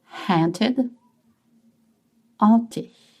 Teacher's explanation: We don't pronounce the H in French.